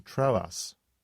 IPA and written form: ˈtroʊ.əs (Troas)